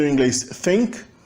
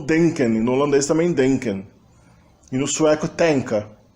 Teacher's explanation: o endurecimento, ou seja, a oclusivização da fricativa dental tha ou za, que além do inglês só se preservou no islandês e no faroês.